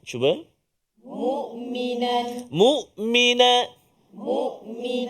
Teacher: huruf Ain pada kalimah mukminan Cuba mukminan Mukmin Mukmin ha jadi pastikan kita letak Hamzah tu di Pangkal betul-betul jangan tolak pergi Ain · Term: huruf hamzah